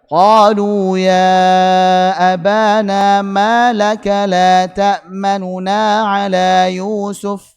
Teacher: Jadi asalnya kan la ta'manuna. Nu-nya kurang jelas, dibaca lebih rendah suaranya dan lebih cepat, kayak ngegas, tapi kurang jelas. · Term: raum